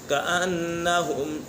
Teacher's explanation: نون مشدد ہے، نون مشدد میں سے غنہ ہوتا ہے